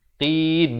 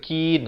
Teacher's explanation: Qaf dipangkal kerongkong lidah ini. Manakala kaf di depan sedikit.